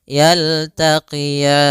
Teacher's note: Kemudian pada lafal ro ini di sini ada bacaan lin yaitu adanya fathah bertemu dengan ya sukun lembut dalam lafalannya